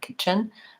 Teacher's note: But because when I'm saying it fluently, there's not really much of a break there, kitchen. I think that T is either silent, stopped, or dropped out entirely, and I just do the CH sound. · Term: stopped T